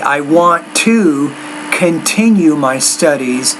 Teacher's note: with the tea you need to pronounce that with more air